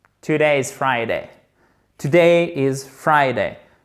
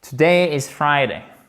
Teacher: C'est comme un chapeau là. Ça monte et ça redescend.